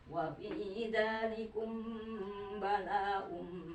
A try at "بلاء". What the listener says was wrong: kurang panjang lama 5 harkat.